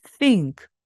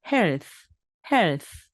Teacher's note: 거죠 끝부분은 스 발음으로 끝나게 됩니다 건강이라는 말입니다 health 그렇습니다네 그래서 think health 두 가지다 목이 울리지 않고 바람이 나오는 바로 무성음 th 발음입니다